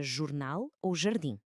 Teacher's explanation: um som muito mais suave, contínuo, quase um chiado